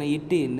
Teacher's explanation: நாவின் நுனி அன்னத்தின் நுனிப்பகுதியை பொருந்துவதால் பிறக்கின்றன